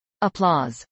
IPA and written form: əplˈɔːz (applause)